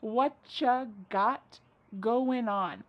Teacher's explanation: Whatcha is what plus you. U becomes cha.